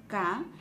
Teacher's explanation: cuando pronunciamos K, existe una obstrucción. Por esa razón, decimos que es un fonema oclusivo. Pero también la lengua se retrae a la parte posterior o a la zona velar. · la lengua se retrae a la parte posterior o a la zona velar. Por eso es un fonema consonántico velar.